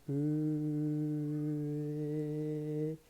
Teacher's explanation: se você começar no O, né, e terminar no E, ali no meio, né, você vai encontrar então a pronúncia exata do Ö, tá? Então, Ö, tá?